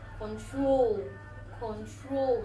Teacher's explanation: Stress is on the last syllable.